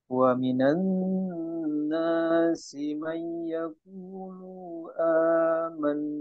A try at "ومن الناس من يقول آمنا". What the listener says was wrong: Yaqulu a. Jadi jangan, jangan dijeda di lu-nya.